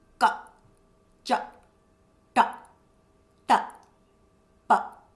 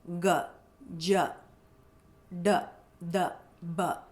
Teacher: So the voice or my throat is really relaxed. The vocal cords are vibrating freely.